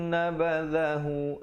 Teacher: nabadhahu za di hujung lidah.